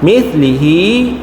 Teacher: Ha masukkan dan dengung dua harakat. Mimlihi nun masuk dalam mim. Idgham maalunah. Eh. Nun mati masuk kepada mim.